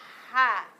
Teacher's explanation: Huruf H keluar di mana, Nak? Tenggorokan tengah. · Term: huruf ha